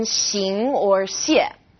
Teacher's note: this sound is somewhere in the middle of SH and S